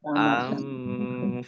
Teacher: nun sukun bertemu dengan huruf fa bacaan ikhfa dibaca samar-samar